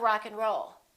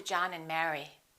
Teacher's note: In this case, we reduce the A and the D. Those disappear often.